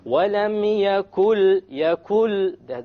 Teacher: So we drop the noon and we connect what is before it, which is the kaf, to with what is after it, and that is the noon, the lam. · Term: idgham